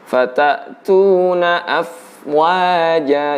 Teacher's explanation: Jadi pelepasan huruf fa itu bersamaan dengan pengucapan huruf wawu. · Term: fa sukun